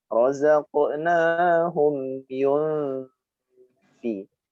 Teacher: Nun sukun bertemu fa dibaca ikhfa, dengung. Nah, dengungnya pada makhraj huruf fa itu sendiri.